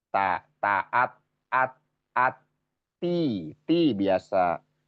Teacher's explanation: ini ya. Ti, ti biasa, ti tipis karena sifatnya istifal. Ti secara itunya istifal, jadi dia makhrotnya satu makhrot dengan to, satu makhrot dengan dal, ya.